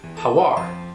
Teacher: When pronouncing this greeting, native speakers will kind of link the first two words together. So the final sound in how and the initial sound in are will get blended to sound like how are.